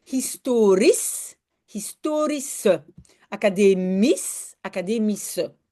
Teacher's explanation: dans ce cas-là, très facile, on prononce SCH comme S, un simple S.